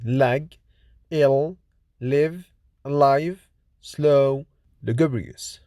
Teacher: L is voiced alveolar lateral approximant consonant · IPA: /l/